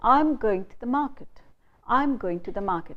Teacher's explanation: I don't stress the whole word going. I don't stress market fully. I just stress go and mar. So in this whole sentence, I stress only go and mar.